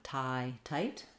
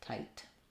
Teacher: Make sure that you hold your I a long time. Tie, tight. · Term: I diphthong